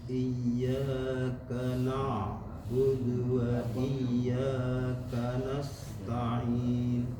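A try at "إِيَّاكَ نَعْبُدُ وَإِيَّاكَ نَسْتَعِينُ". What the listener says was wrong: Ya, na itu masih kedengaran tebal. Tipis digabungkan ke tebal.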